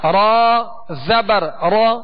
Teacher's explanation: را کو پر پڑھیں گے، را پر زبر ہے